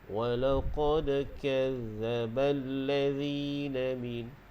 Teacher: zal di situ dia tak bunyi z, dia tak bunyi macam lebah. Jadi kita lembutkan. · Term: huruf zal